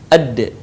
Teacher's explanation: lidah kita ke gusi bagian atas sebagaimana kita melafalkan huruf ta di dalam keadaan mati huruf da terdengar suaranya memantul